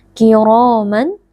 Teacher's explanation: ra huruf tebal karena di sini ra berharokat fathah, dibaca dengan mengangkat pangkal lidah